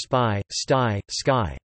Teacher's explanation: P, T, K, are unaspirated, as in the Romance languages, or as in English spy, sty, sky.